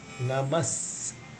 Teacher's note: So there it is a Namaha Saspinjaraya, because of the Visarga becomes emphasized Sa, because Sa is following the Visarga, therefore it is Namas Saspinjara. So you have to say Namas.